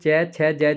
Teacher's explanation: श्वास घर्षण के साथ बाहर आती है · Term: स्पर्श संघर्षी